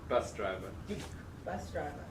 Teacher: There's a stress on bus.